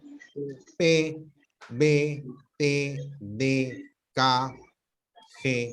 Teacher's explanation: La oclusiva es una obstrucción total, ¿no? Cuando decimos P, B, T, normalmente cuando lo pronunciamos, nuestros labios están casi sellados.